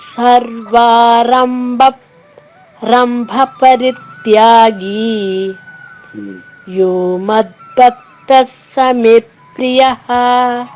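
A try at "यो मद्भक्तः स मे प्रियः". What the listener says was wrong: ఇక్కడ మే దీర్ఘాక్షరము. ఆ ఆఘాతం నొక్కి చెప్పడం కోసం ఆ దీర్ఘాక్షరాన్ని హ్రస్వం చేయకూడదు. మే ప్రియ అన్నారు. అలా కాకుండా యో మద్భక్తః స మే ప్రియః. సమే దాన్ని మాత్రం కాంప్రమైజ్ అయ్యి దాన్ని తగ్గించకుండా అంతే దీర్ఘంగా పాడి ప్రియ చెప్పచ్చు. అది సౌమ్యాఘాతం ఉంటుంది. దీర్ఘాక్షరానికి వచ్చిన ఆఘాతాన్ని సౌమ్యం అంటాము. హ్రస్వాక్షరం పైన వచ్చిన ఆఘాతాన్ని స్ట్రాంగ్ అంటారు.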